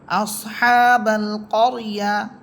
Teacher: এখানে র হরফ মোটা হবে র হরফ সাকিন তার পূর্বে আছে জবর